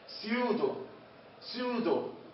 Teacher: البي مع الأس، البي سايلنت. وإيش تلفظ؟ فقط بنلفظ الأس.